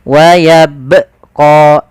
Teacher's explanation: kesalahan yang sering terjadi ya teman-teman yaitu dia menambahkan Hamzah di situ